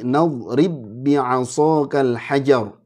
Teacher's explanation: ini ba ketemu ba, ini diidghamkan.